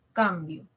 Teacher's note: Cambio tiene acento. ¿Dónde está? Es grave, en la penúltima. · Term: acento fonético